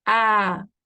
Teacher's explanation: now you have the med letter ah so now you are lengthening these for two counts